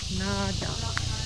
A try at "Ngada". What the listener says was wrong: NG we pronounce Yes. Ngada.